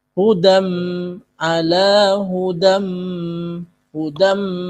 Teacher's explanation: Ala mad tha thobi'i hudam ala hudam hudam tanwin bertemu dengan mim idgham bighunah bighunah diikuti dengan dengung